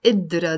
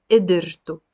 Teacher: There is a سكون on the دال. Here I'm pronouncing it as if you're putting like a كسرة under the دال.